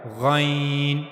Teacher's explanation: غائن کی ادائیگی کے لیے گلے کے اوپر والے حصے کو، جو منہ کی طرف والا حصہ ہے گلے کا، اس کو استعمال کیا جائے گا